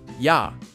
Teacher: the vowel ya is actually a combination of the vowel sound e and the vowel ah. If you say e and a quickly, it sounds like ya.